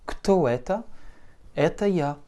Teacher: Alors, kto это, que tu sais désormais écrire, kto это, comme ceci, donc avec un accent très prononcé sur le e, et donc notre o se réduit en a